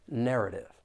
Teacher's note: there are three syllables and the stress is on that first syllable